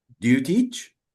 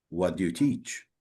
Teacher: in yes, no question, we use rising intonation, but in question word questions or WH questions, we use falling intonation